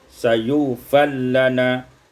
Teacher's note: Pada ayat 169, sayufarulana, idghamur ra fil lam, diidghamkan ra pada lam